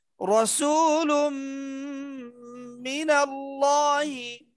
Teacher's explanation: নুন তানবিনের পরে মিম ইদগামে বা গুন্না